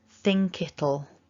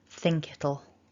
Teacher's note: So the K kind of hops across. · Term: linking